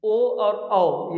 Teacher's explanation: ओ और औ ये कंठ से भी निकलते हैं और ओठ से बोला जाता है, तो इसलिए इसको हम लोग बोलते हैं कंठोष्ठ।